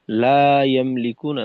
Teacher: আর এইখানে লা ইয়ামলিকুনা, লাতে টান হবে, একালিফ টান